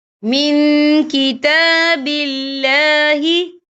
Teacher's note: نون ساکن کی آواز کو ناک میں چھپائیں گے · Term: اکفا